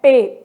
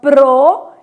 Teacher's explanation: P é uma consoante bilabial